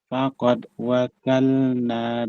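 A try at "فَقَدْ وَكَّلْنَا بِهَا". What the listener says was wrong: Faqad wakalna, sedikit ditekan Pak untuk kafnya tazik.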